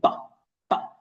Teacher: it's voiced because you feel the vibration in your throat, and it's bilabial because both lips need to come together, and it's plosive because it counts for like in form of an explosion.